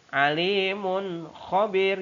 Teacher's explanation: Selanjutnya kalimat yang ke-10, alimun khobir, yang digaris bawahi adalah huruf mim dan kho. Huruf mim bertemu dengan huruf kho adalah izhar halqi, dibaca secara jelas.